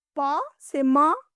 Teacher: आपके होठ सटते हैं और खुलते हैं, इसीलिए प से माँ ध्वनि ओष्ठ से आती।